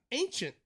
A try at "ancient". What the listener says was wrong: There's no K, dude.